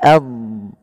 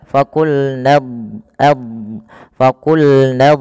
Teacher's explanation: huruf Dad itu kan makhrajnya Sisi lidah kita bertemu dengan gigi raham atas